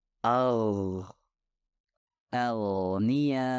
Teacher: gain dihasilkan ketika bagian belakang lidah diangkat ke atas dan hampir menyentuh langit-langit lunak